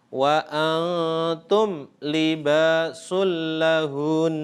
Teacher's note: panjangnya ghunnah panjang dengungan tidak hanya satu Alif tapi satu setengah Alif atau tiga harokat